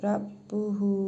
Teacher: Hə zamirini isə 1 əlif miqdarı uzadaraq oxuyuruq.